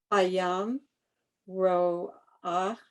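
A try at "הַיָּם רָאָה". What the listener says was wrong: No, why are you doing the O? Look again.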